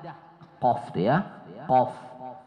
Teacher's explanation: Nah, qaf itu kan hurufnya di pangkal lidah. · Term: huruf qaf